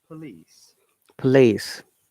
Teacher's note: in police, this O is a schwa sound, so it's place rather than police.